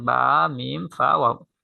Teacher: এখানে দুই ঠোঁট থেকে উচ্চারিত হয়, এখানে কোনো জিহ্বা বা দাঁতের কোনো কাজ নেই